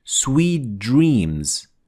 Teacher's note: we fuse the t with the d into one letter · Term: assimilated